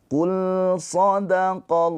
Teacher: Lam dia mempunyai sifat tawasud, ada aliran suara sedikit.